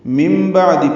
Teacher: نون ساکن کے بعد با آنے کی وجہ سے نون کی آواز کو بدل دیں گے میم سے ، اس بدلنے کا نام ابدال یا اقلاب ہے، تو یہاں